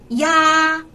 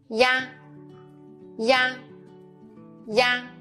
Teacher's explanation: When you pronounce the final ya, make the e sound, then quickly switch to the a